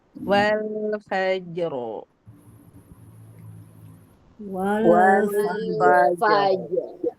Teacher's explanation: Jimnya tipis dulu baru ro-nya tebal.